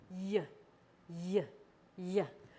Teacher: This is a gliding sound, so it kind of starts a little bit further back in the mouth and moves forward.